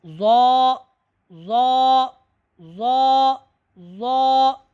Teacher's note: حرف زال اور حرف ضا ان کا مخرج ایک ہے، لیکن زال جو ہے یہ باریک پڑھا جا رہا ہے جبکہ ضا یہ موٹا پڑھا جا رہا ہے